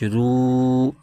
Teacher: खींचे पढ़ेंगे र पर पेश है और आगे वाव साकिन है वाव साकिन से पहले पेश आ जाए तो वाव मद्दा होता है इसको एक अलिफ खेंच के पढ़ते हैं